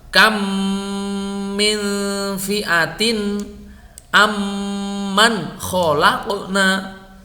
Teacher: huruf mim yang pertama diidghamkan ke huruf yang kedua dan dibaca tasdid, kemudian dibaca dengung yang lama. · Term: idgham mimi